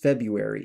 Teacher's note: some people pronounce it with the R but by and large it's just February and you drop that first R